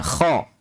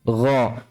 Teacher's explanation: Berbeda dengan kha. Kalau kha memang di situ ada getarannya, kha. Kalau gha tidak.